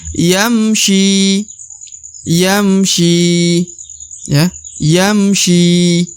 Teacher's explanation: yam yam syi ini huruf Sya harakat I maka dibaca syi huruf syi dipanjangkan dua harakat